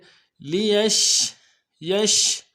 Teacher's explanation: یا کو شین کے ساتھ ملانا ہے، شین حروف تفشی میں سے واضح کریں گے